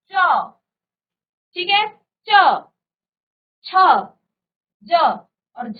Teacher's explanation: निकलती है ठीक है ना स्पर्श संघर्षी स्पर्श संघर्ष यानी कि पहले आपकी जो जीव है वो पहले स्पर्श कर और फिर क्या करेगी संघर्ष करेगी यानी कि रगड़ खाएगी